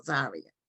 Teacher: The accent is on a different syllable. It's on the first syllable